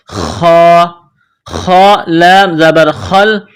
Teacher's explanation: جس طرح انسان گلے سے بلغم نکالتا ہے اسی طرح اس خا کو نکالنا ہے